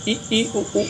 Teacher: संवृत स्वर इ उ मुख पूरा बंद होता है।